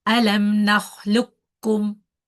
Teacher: here we are not pronouncing the qaf. Okay, we are going straight from the lam to the kaf.